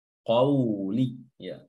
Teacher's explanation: jangan juga dibaca panjang qauli ya. namun dibaca pendek saja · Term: sifat lin